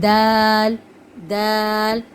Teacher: زبان کی نوک ثنایا اولیہ کی جڑ